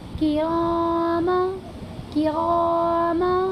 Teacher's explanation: زبر کی تنوین کی آواز کو ناک میں چھپا کر پڑھیں گے، جیسے کرام، کرام، حالانکہ کرامن ہے اصل، کرامن، من، لیکن اس کے بعد اخفاء کے 15 حرفوں میں سے کاف آیا ہوا ہے، اسی لیے اس کی آواز کو ناک میں چھپا کر کے پڑھیں گے، جیسے کرام کاتبین۔